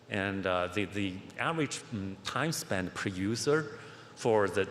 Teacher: we didn't hear any vibration so his voice is kind of disappearing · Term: whisper